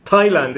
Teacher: the final bonus th sound is in words like th in Thailand. Thailand, it's a t sound